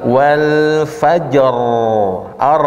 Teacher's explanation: terus ro-nya nggak boleh takrir berlebih, ya. Nggak boleh gini, wal fajr.